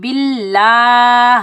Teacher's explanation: اگر زبر ہوتا تو اللہ کے لام کو ہم موٹا پڑھتے، اب زیر ہے، زیر ہونے کی وجہ سے اللہ کا لام باریک پڑھا جائے گا